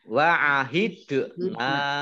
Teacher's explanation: dal sukun bacaan kolkolah memantul. Wa'ahidna fathah alif mat tobi'i, tetapi karena bertemu dengan huruf alif di kata yang berbeda maka menjadi mat jaiz munfasil.